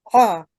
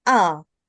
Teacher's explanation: the difference is that ayn is from the middle of throat and Hamza is deep down of the throat